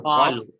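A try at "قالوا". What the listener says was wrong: olu. Little more. Your mouth should become a little round.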